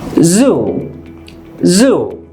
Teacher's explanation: Put your tongue against your bottom teeth. And as this is a voiced sound, you will use your voice to produce this sound. [Music] Your tongue will touch your bottom teeth. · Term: Z sound